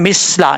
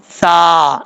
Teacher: سا کا مخرج ہے زبان کا سرا اوپر والے دانتوں کے اندرونی کنارے سے لگے تو سا پڑھا جاتا ہے بغیر سیٹی کے